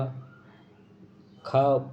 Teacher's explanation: स्पर्श व्यंजन है कंठ ध्वनि है अघोष और महाप्राण है